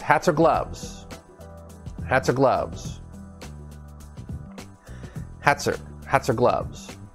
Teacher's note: it's a consonant connected to a vowel and we tie everything together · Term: linking